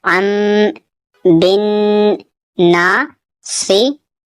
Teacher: تنوین کے بعد با ہے تو ان نہیں پڑھنا ہے، اسے ام یعنی میم میں ملا کر پڑھنا ہے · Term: اقلاب